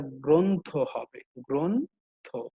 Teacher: আমি আবারও বলছি, এই যে গ্র, এখানে কি কি আছে, গ আছে, রফলা আছে এবং অ আছে। এই যে শেষের যে অটা, এই অটা পরিবর্তন হয়ে ও হয়ে যাচ্ছে, এটা গ্রন্থ হবে, গ্রন্থ।